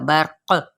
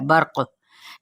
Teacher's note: قاف پہ ہم ساکن کریں گے تو کیا ہو جائے گا یہاں پہ اب آٹومیٹک کلکلا ہو جائے گا